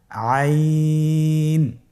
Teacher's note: আইন হরফটি কন্ঠনালীর মধ্যখান থেকে উচ্চারিত হয়।